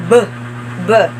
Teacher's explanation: This is a voice bilabial stop.